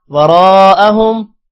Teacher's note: رو موٹا ہوگا، رو کے بعد الف ہے، الف پر مد ہے، لمبا کریں گے